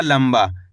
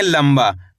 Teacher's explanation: इसके अंदर आधा माँ का उच्चारण हुआ है, इस तरीके से पढ़ा गया है ये शब्द लंबा।